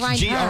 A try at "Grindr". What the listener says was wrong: Grindr. There's not even an E in it. There's no E.